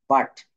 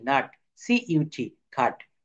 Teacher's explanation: ইউ এর উচ্চারণ ইউ এর মতো হচ্ছে না, ইউ এর উচ্চারণটা হয়ে যাচ্ছে আ, আ। কিভাবে হবে, BUT, বাট।